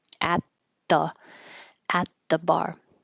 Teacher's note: you won't hear that t on at because the sound after it is a consonant